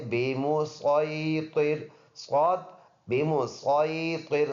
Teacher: اور اگلا ورڈ ہے بمسیطر، صاد بمسیطر، صاد پڑھیں گے، سین نہیں پڑھیں گے، صاد پورا ادا ہونے والا حرف